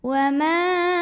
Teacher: Maka mimnya dipanjangkan boleh 4 boleh 5 harokat. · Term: mad jaiz munfasil